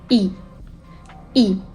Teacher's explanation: so your lips should be stretched also the tongue moves forward and it's tip touches your lower teeth